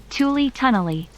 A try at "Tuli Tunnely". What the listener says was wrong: Ah, she even, pronounced it right. Almost. Didn't quite put enough emphasis on the ooh, but sure.